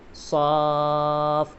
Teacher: جیسے صاد فا مد کھڑا زبر صاف اس طرح سے اور حرف مد کے بعد والے حرف پر تجدید بھی آ رہا ہے تو یہاں پر مد لازم ہوگا اور مد لازم کو 3 سے 3.5 الف کی مقدار کھینچ کر بھی پڑھا جائے گا